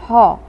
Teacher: হ, কণ্ঠনালীয় ব্যঞ্জন। কণ্ঠনালীর মধ্যে শ্বাসবায়ু ব্যাহত হয়, হ ধ্বনির উদ্ভব হয়, সেজন্য বলা হয় কণ্ঠনালীয় ব্যঞ্জন।